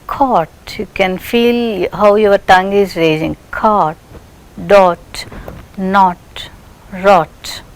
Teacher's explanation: tongue is raising towards soft palate and lips are rounded and above open position. Tongue is rising to the position of above open. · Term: back rounded vowel